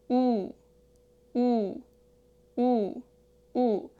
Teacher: Your tongue is still positioned toward the back like 오, but this time raise it a bit higher than 오.